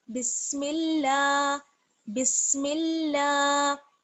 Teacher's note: تو دیکھ لیتے ہیں سب سے پہلے اور یہاں پر اللہ کا لام ہے، میم کو ہم لام سے ملائیں گے، اور اللہ کا لام ہے تو اس لیے جو لام ہے وہ باریک پڑھا جائے گا زیر کی وجہ سے